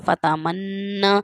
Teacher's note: تو جو تشدید والے حروف ہیں دوبارہ جیسے آواز پلٹ کر آتی ہے، تو اسی طرح سے آپ نے اس بات کا خیال کرنا ہے، سختی سے تھوڑا ادا کرنا ہے۔ فتمنا، یہ زبان جو ہے اوپر والے جڑوں سے ٹکرائے گی، اوپر والے حصے کے سامنے والے جو دانت ہیں ان کی جڑوں سے ٹکرائے گی، تو پھر یہ لفظ ادا ہوگا۔